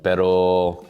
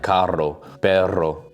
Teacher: When it's just one r, pero, it's like a soft r, but then if you have two r's next to each other, like carro, perro, then you have to roll the r like err, you know?